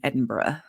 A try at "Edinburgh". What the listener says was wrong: Edinburgh. Edinburgh, not borough, but Edinburgh.